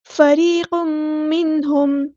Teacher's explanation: را ہمارا یہاں پہ باریک لیٹر ہے، ہم باریک پڑھیں گے، اور یا ساکن سے پہلے زیر ہے تو یا مد آ گیا، ہم مد اصلی کریں گے، ایک الف کے برابر لمبا کریں گے۔